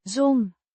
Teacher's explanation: Zo'n, Means such a or this kind of, pronounced zon. with a drawn out O, sound. The z. sounds like a soft s, and the n is nasal.